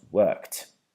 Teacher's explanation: even though we spell it with the D, it's going to turn into a T.